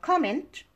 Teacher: this is a noun and stress is on the first syllable